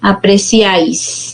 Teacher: Aquí la mayor fuerza de voz recae en la vocal abierta y termina, pues aquí sería un caso de triptongo, ¿no? Y termina en consonante S, por eso que está ahí la tilde, ¿no?